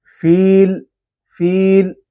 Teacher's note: لام کے اندر قلقلے والی صفت بالکل بھی پیدا نہ ہو پائے